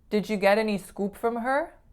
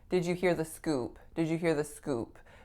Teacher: Scoop with a pure O, versus a native speaker would say it with more of a diphthongized oo.